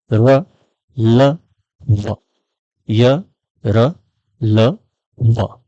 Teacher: अंतस्थ ध्वनियां यानी कि इसमें जिह्वा किसी भाग को स्पर्श नहीं करती है, केवल जिह्वा का अंदर विचरण होता है